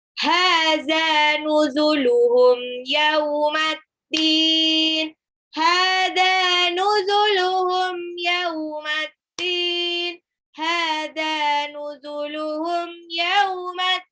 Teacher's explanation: Yaumaddin, alif lam syamsiyah, din di belakang mad alif disukun.